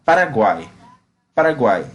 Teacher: vai haver encontro de duas semivogais e uma vogal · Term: tritongo